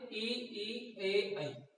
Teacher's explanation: जीव का जो अगला भाग है वो ऊपर नीचे होता है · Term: अग्र स्वर